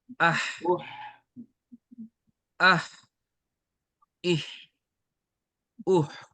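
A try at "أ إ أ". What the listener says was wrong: Nah, kalau itu putus ya. Harus dia ngalir. Ah, ih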